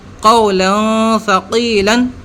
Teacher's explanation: زبر کی تنوین کے بعد میں سا آ گیا، اخفا والا حرف ہے سا، لہٰذا ہم چھپا کے پڑھیں گے